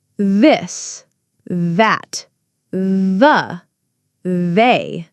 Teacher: Now let's try the voiced TH sound, like in this. The difference is that your voice box vibrates.